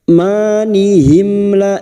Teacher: mim sukun bertemu lam idhar syafawi, mim sukun dibaca jelas tanpa mendengung